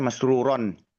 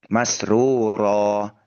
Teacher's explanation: ketika diwakafkan fathah tanwin itu berubah menjadi bunyi panjang masruro seperti itu ya dua harakat ya seperti itu bunyi panjang atau mad yang madnya itu dinamakan mad iwab pengganti dari fathah tanwin itu.